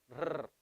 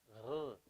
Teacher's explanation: the Spanish R, you're rolling it from the front